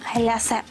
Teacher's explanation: наголос ставимо на другий склад як і у французькій мові